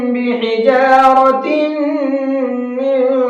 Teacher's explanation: ہے اور تنوین کے بعد میں پھر میم آ رہا ہے، تنوین کے بعد میں میم آتا ہے تو وہاں پر بھی غنہ کر کے پڑھتے ہیں